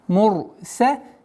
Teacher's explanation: Ра твердо произносится, так как впереди стоит дамма.